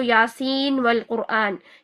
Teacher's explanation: تو شاطبی کے طریقے سے دیکھیں تو یاسین والقرآن، یہاں پر سین یعنی نون اور واو، یہ نون کا اظہار ہی ہو رہا ہے